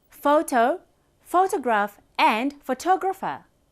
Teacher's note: But when it comes to photographer, pho is unstressed, tog is stressed, ra unstressed, fa also unstressed.